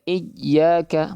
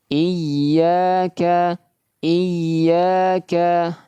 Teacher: huruf ya termasuk huruf yang sifatnya rakhawah, mengalirkan suara. · Diberikan tekanan suara, nabr diberikan, akan tetapi suara masih tetap mengalir.